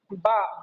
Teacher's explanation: दोनों होठों को आपस में मिलाने पर हमारा बा अदा होता है।